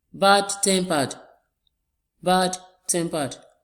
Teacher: We have the stress on the first syllable as well of the second word.